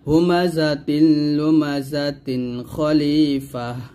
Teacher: তানবিনের পর খ আসার কারণে এটা ইজহার হয়েছে